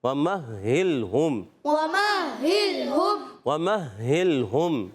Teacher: وَمَهِّلْهُمْ میں واو کی ادائیگی ہونٹوں کی گولائی سے